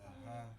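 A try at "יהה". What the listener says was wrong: That's a ya.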